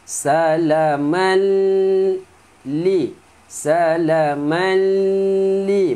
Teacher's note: min tanwin bertemu lam, masukkan tanwin ke dalam lam tanpa dengung